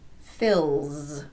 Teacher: The L is a voiced consonant, l. So the S will be pronounced z